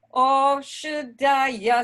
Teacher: That is an aspirated dha.